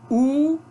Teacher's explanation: é arredondado, uma vogal posterior arredondada